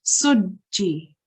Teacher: So instead of saying sujji, which is very soft, we say it quite strongly, sujji, and we express both sounds. So it's the sin, in this case, which is a madmoom sin, so we will say su, and in this case it's a maksur jeem, and we remember there are two jeems beneath the W.